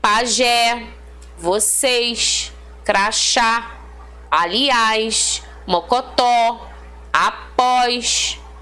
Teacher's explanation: todas são classificadas como oxítonas Ok última sílaba mais forte